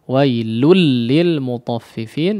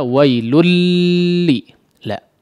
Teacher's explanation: idgham pada huruf lam tidak dihunakan ya idgham bilagunnah ya sukun atau tanwin yang bertemu dengan huruf lam Emang diidghamkan